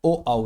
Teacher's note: कंठोष्ठ तो कंठोष् हैं ओ औ यानी इन्हें बोलने में हमारे कंठ पर भी प्रभाव आता है और हमारे ओष्ठ भी गोल हो जाते हैं।